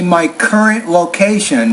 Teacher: you want to put stress on current and location